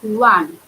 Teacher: But while pronouncing O, the sound comes like wa.